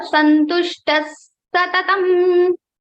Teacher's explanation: Visarga sound will be converted into the same Sa. So this Sa will be repeated